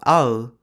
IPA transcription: aɯ